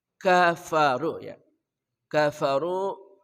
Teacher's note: kaf dengan fa itu sama-sama berdesis